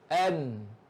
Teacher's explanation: Tapi bila dimatikan dia, an mana iaitu lidah kita, an lidah kita ni dia kena ke langit-langit di depan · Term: nun